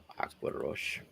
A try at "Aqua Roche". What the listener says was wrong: Roll your R's better.